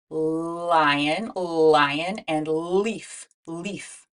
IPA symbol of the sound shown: l